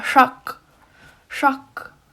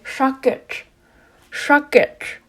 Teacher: So for the plural though, you'll see a lot for a plural command, you have to add a retroflex T, the T with the dot underneath it at the end of the verb